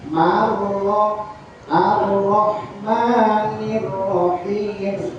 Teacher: Hanya satu getaran, marro ar-rahmanir-rahim, jangan ar-rahmanir-rahim, itu kebanyakan getarannya ya. At-takrir getaran halus, satu getaran ya.